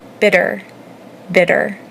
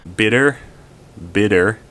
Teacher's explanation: Say it a million times and feel what your tongue is doing as it taps the part of the roof of your mouth right behind your teeth. It's called a flap.